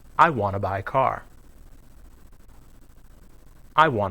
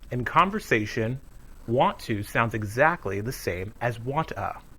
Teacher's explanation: There is no T sound in wanna, so all you hear is the sound a. That's the same sound we use to pronounce the word a car, a cookie.